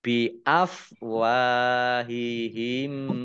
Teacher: langsung masuk ke huruf mim yang kedua ditandai mimnya ada tasdidnya mim tasdid dibaca ghunah atau mendengung ditahan dua harakat